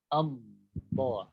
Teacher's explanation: Antum merapatkan kedua gigi. Kemudian tepi lidah itu tempelkan ke geraham atas. Tempelkan. Sepanjang itu tempelkan dari mulai pangkalnya.